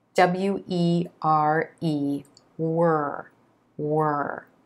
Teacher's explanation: the sides of the tongue are pressed against the inside of the top teeth the back of the tongue is raised up towards the soft palate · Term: ER sound